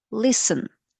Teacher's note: in this word listen, we don't pronounce letter T. It is silent.